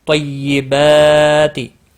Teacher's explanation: با کے اوپر کھڑی زبر ہے، ایک الف کے برابر کھینچ کر پڑھیں گے۔